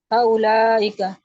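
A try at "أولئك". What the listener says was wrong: नहीं, उलाइका, ये हा उलाई तो हो गया खत्म, ये अभी उलाइका है। उलाइका में वाव पे कुछ नहीं है, उलाइका।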